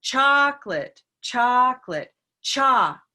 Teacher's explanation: say it let's say chocolate chocolate cha so by doing that we have now located the stress which is on the first syllable